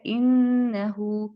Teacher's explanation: नून मुशद्दद जब आ जाए तो हम इसको गुन्ना करेंगे, ये अलखैशूम इसका मखरज होगा।